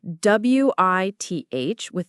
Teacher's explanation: the voiced th sound where your tongue is between your teeth and you make a vibrating sound. So bare with that voiced th can be tricky.